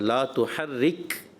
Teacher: आपने यहाँ पर रा को पुर किया, ये बारीक करना होता है